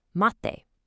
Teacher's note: It makes a kind of sharp, cut-off sound like a double T.